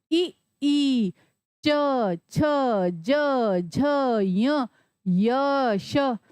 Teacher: तो हमारी जीभ के जो दोनों किनारे हैं वो ऊपर वाले तालू को स्पर्श कर रहे हैं